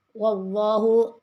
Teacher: Wallahu lafzul jalalah tebal karena bertanda fathah sebelumnya.